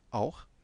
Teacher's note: Il y a une diphtongue, auch, mais bon, c'est A et U